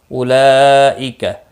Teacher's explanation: بڑی مد ہے متصل 4 الف کے برابر کھینچ کر پڑھیں گے